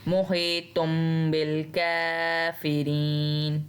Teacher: نون کی آواز ہم نے سائلنٹ کر دی. نون کی آواز کو ہم نے میم سے بدل دینا ہے.